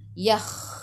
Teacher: Yakh masuk ke dalam kha, kha ada sukun dan bunyikan biar ada angin.